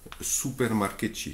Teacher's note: Tu vois encore, le U de supermarché devient OU